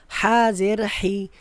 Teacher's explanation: বড় হা গলার ভিতর থেকে